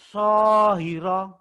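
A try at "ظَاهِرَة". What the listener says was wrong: Bukan so tapi zo. Zahira.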